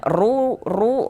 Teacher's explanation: huruf ro memiliki harakat damah tadi dibaca tebal